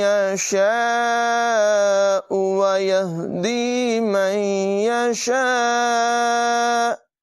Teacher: الف مدہ کے بعد حمزہ اسی کلمے میں ہے، مد متصل ہے دونوں جگہوں میں، تو اسے بھی 2-3 سیکنڈ تک لمبا کر کے پڑھیں گے